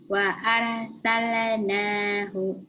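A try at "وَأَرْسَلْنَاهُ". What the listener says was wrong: Sale, sale, sale. Jangan sale. Warsalna. Jangan ada e-nya.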